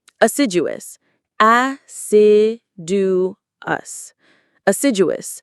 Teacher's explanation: The stress is on sid.